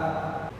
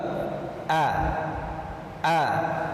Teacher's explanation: Namun sifat huruf hamzah ini harus tipis, yaitu tarqiq.